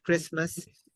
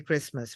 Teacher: The omission of T in the sound of Christmas.